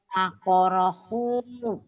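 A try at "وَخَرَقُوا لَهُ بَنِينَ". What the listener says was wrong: Bukan wahorohu, wahoroku ini ki, kokok, baju kokok. Wahoroku.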